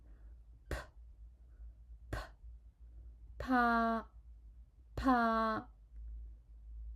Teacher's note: The tongue position of p is same as b, but when you pronounce p, you need to pronounce it with heavier puff of air